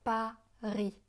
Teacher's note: Le S de Paris est muet